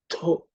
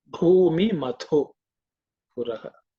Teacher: This tha is the second letter in the tha varga, so it has to be aspirated.